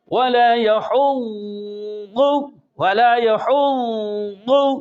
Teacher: اب ضاد وہ جو اطباق ہے وہ بھی ادا ہو رہی ہے اور ساتھ ساتھ رخوت بھی ادا ہو رہی ہے. اور اگر ہم کریں گے ولا يحض ولا يحض تو اس میں دال کا مخرج اس میں مشترک ہوتا ہے، لہذا مخرج میں تمیز کرنی ہے اور صفات میں یہ قریب قریب ہے.